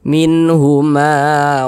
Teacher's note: Ma dibaca panjang Mad thi'i panjangnya dua harakat